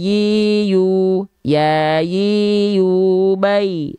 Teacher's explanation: Tengah lidahnya diarahkan ke langit-langit tanpa menyentuh ya tanpa menyentuh jadi dia tetap ada celah karena ynya memang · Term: Wastu lisan